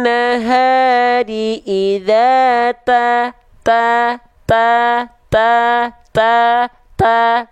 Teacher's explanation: ada percikan nafasnya sedikit ta ta ta tapi jangan sampai berlebihan Ah ada yang pengin